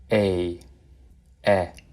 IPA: eɪ